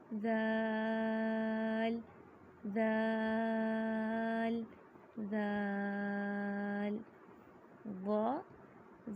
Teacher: ذال کی ادائیگی میں زبان کی نوک کو سامنے والے اوپر کے 2 دانتوں کے اندرونی کنارے سے نرمی سے لگا کر باریک آواز میں پڑھیں گے